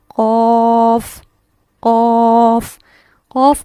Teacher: یہ ہے قوف کا مخرج، زبان کی جڑ بالمقابل اوپر کا تالو